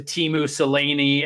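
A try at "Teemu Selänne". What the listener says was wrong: You put the wrong emphasis on the wrong syllable.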